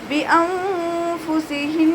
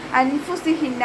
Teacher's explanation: ബിഅൻഫുസിഹിൻ നൂൻ സാക്കിനയ്ക്ക് ശേഷം ഇഖ്ഫാഇൻ്റെ ലെറ്ററായിട്ടുള്ള ഫാ വന്നു. നൂൻ സാക്കിനയെ മറച്ചു വെച്ചിട്ട് മണിച്ചോതി കൊടുക്കുക. നൂനിൻ്റെ സൗണ്ടിനെ വ്യക്തമായിട്ട് കേൾപ്പിക്കരുത്. അൻഫുസിഹിന്ന എന്ന് ഓതരുത്.